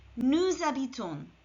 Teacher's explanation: We can hear the S of nous here because the H is silent and the next sound heard is a vowel. So the S of nous is pulled to habitons.